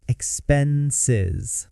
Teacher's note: It's not expenses, it's expenses. The S in the middle sounds like a Z.